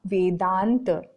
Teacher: आ स्वर है। तो आ और आ दोनों मिलकर के बड़ा आ में परिवर्तित हो गए और वेद धन अंत मिलकर के नया शब्द बना वेदांत।